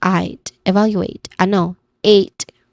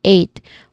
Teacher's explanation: eight, with a clear A diphthong sound